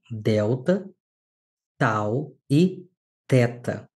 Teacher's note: A língua vai tocar o céu da boca e os dentes superiores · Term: as dentais